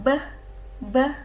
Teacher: bunyi bilabial yang diucapkan secara meletup